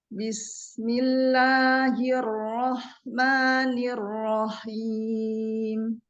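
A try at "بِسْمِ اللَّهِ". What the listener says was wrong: Iya, bismillah, lamnya ditipiskan lagi. Bismillahi. Jangan milo ya, ditipiskan saja.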